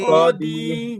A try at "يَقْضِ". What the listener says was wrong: ছাড়বে দি, টানা যাবে না, হরকত তাড়াতাড়ি, ইয়া ক দি, ইয়া ক দি, এমন বলা যাবে না। হ্যাঁ, ইয়া ক দি মা, বলেন